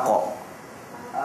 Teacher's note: Pangkal lidah sekali datangnya huruf qaf.